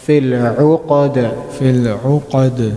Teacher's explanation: Not u but a'u from the middle of the throat, not from the bottom of the throat. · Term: Ain